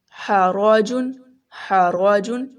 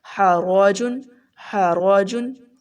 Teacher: را جو ہم نے موٹا پڑھا کیونکہ را کے اوپر زبر ہے